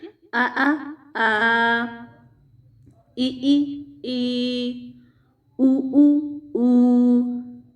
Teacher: Stretch कितना करना है, 2 काउंट्स, यानी जितना हमने ज़बर को किया था फॉर एग्जांपल उसको डबल कर लें। उसको आप कैसे कंपेयर करवा सकते हैं, फॉर एग्जांपल आ, जितना टाइम 2 हरकत ने लिए है उतना हमने एक हरफ मद को देना है, यानी हरकत 2 हरकत के इक्वल जो होता है वो हरफ मद का टाइम होता है। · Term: हुरूफ मद्दा